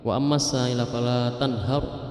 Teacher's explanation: Tanhar roknya dibaca tebal, itu rok tarqiq, rok tafkhim.